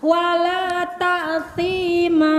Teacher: Ma, nggak usah pakai hamzah ujungnya. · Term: mad iwad